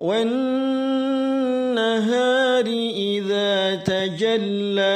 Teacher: Langsung masuk ke suara huruf nun tasydid, seolah-olah alif lamnya tidak ada. Dan nun tasydid adalah gunnah, maka harus ditahan 2-3 harakat.